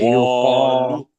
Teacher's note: یہ قاف کو موٹا کرنا ہے، لام پتلا ہونا ہے